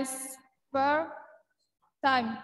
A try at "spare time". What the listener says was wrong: Bukan spur.